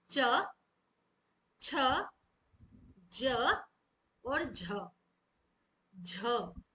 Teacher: जिन व्यंजनों के उच्चारण में वायु पहले पूर्ण स्पर्श होकर रुकावट उत्पन्न करती है। फिर धीरे-धीरे संघर्ष के साथ बाहर निकलती है। उन्हें संघर्ष स्पर्शी व्यंजन कहा जाता है। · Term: स्पर्श संघर्षी व्यंजन